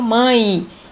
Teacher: Então, eu tenho o E com som de I. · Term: semivogal